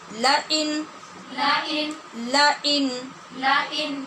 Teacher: ایمانہم ایمانہم ایمانہم ایمانہم لئن لئن لئن لئن نون پہ ہم غنہ کیوں نہیں کر رہے؟ کیونکہ نون ساکن کے بعد حمزہ حروف حلقی میں سے ہے، اظہار حلقی ہو رہا ہے